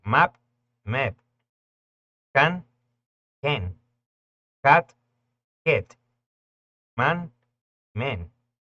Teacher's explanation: Es un sonido entre una A y una E